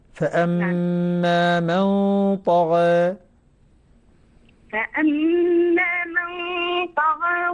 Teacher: أعطي الغنة حق، أعطي الغنة مع تفخيم الطاء حقها.